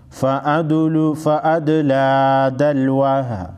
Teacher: दाल साकिन को हिलाकर पढ़ेंगे